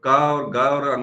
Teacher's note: का और ग और अंगा में सांस का प्रयोग कम हो रहा है, इसलिए अल्प प्राण है।